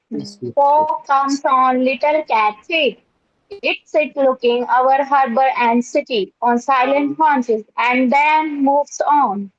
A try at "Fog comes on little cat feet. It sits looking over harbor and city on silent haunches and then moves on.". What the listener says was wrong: No, where's that pause? And then pause, moves on. How is it that you aren't understanding that I want you to put a pause and then moves on? I want a pause after and then.